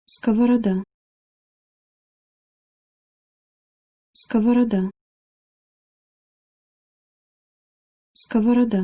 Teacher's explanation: main challenge when it comes to reading this word is that all the Oh vowels are pronounced in their shortened form because the accented syllable is the AH at the end